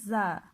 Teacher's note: सनाई सुफला का किनारा और कुछ इत्तिसाल सनाए उलिया से। जुबान की नोक जो है और सनाई सुफला का किनारा और कुछ इत्तिसाल सनाए उलिया से, वहां से निकलता है जा।